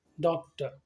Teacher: डॉक्टर में हम देख रहे हैं कि स्पेलिंग में तो ओ और आर लिखा हुआ है, लेकिन हमने आर, ना आर का साउंड प्रोड्यूस किया ना ओ का प्रोड्यूस किया, हमने उसके बदले में प्रोड्यूस किया साउंड अ